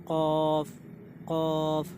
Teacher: क़ाफ़ जो है दोस्तों, जो हमारे हलक में वो जो कौवा या काग जो भी आप बोलते हैं, बिल्कुल वहाँ से क़ाफ़ निकलेगा।